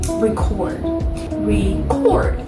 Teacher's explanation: that first syllable is a little less, it's a little bit more weak. It's passed by a little bit more quickly, but then cord receives more energy. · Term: unstressed and stressed